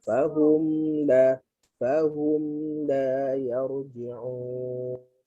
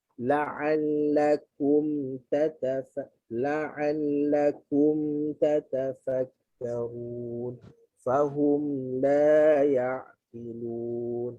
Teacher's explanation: Mim mati yang tidak ada dengung kena ada lepasan suara.